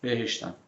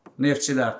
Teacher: dilimizdə ft xt s birləşmələri var bu birləşmələrdə uşaqlar t hərfi tələffüz olunmur